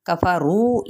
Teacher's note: یہاں پہ واؤ مدہ، ایک الف کے برابر کھینچیں گے